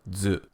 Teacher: first pressing your tongue against the roof of your mouth as if you're going to make a D sound then pronounce the zoo sound